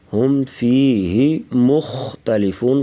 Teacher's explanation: ہم پہ اظہار کریں گے یعنی غنہ نہیں ہوگا